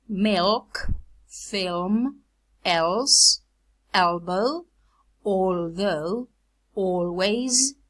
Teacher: the dark allophone occurs before consonants and wa.